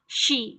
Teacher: ada tafashi itu yang paling menonjol pada huruf shin. Jadi suaranya itu menyebar.